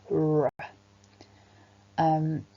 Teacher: The tongue begins by being pressed against the top teeth and it sort of flicks down and outwards when we make that sound, L. Whereas for the R sound, the tongue curls backwards in the mouth